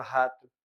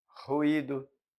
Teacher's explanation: O R muitas vezes, só um R pode ter no início de palavras som vibrante também